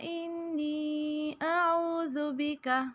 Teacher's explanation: انی نون پہ غنہ کریں گے اور نی جائے مدہ ہے یا ساکن سے پہلے زیر، اس لیے الف کے برابر اسے کھینچیں گے.